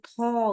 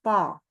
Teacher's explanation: Ya, pangkal lidah naikkan. Tidak ada huruf H-nya gitu. Walaupun dituliskan kadang-kadang po itu dengan TH.